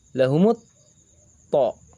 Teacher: To adalah huruf syamsiyah. Dibaca samar, masuk ke melebur ke dalam huruf to. Lamnya samar. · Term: idgham syamsiyah